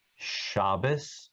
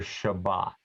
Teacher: Ashkenazim pronounce this letter without a dot as an S sound.